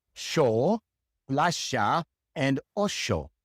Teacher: So the exception to this is in Argentina and Uruguay. People from Argentina and Uruguay pronounce the Y like an SH in English. And so they say sho, plasha, and osho.